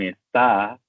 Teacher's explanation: tiene la sílaba tónica en ta y no en es